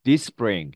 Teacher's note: this spring 해서 앞에 발음 S 발음 없고요. 그냥 this spring 이렇게 발음이 됩니다.